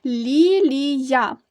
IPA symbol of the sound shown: йа